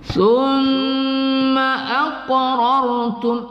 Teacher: qaf ya, berbaris sukun, kita qalqalahkan di situ, qalqalah sughra